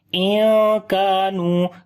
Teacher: After the noon sakin there is kaf. We make ikhfa here, which is the hiding sound of noon.